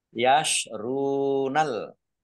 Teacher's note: Ra dhammah wawu sukun mat tabi'i panjang 2 harokat